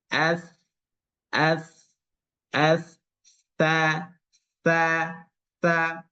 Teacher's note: dia sama dengan D hanya saja dia agak ditiup ada anginnya nah Sehingga dalam mengucapkan sifatnya itu ya pertama dia keluar angin